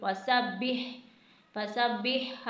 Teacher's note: हा को आपने लाजमन हलक से अदा करना है, सीने से अदा नहीं करना